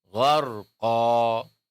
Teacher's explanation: kalau kita berhenti, maka suara tanwinnya itu harus diiwat, harus diganti menjadi alif. Maka bunyinya menjadi gharqa. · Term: mad iwat